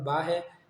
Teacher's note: دونوں ہونٹ جب آپس میں ملتے ہیں تو با ادا ہوتا ہے، لہٰذا دونوں ہونٹ با کا مخرج ہے۔